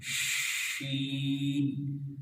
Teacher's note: اس کے ادا کرتے وقت منہ میں آواز پھیلتی ہے ، شین، تو اس پھیلنے کو تفشی کہتے ہیں، اور یہ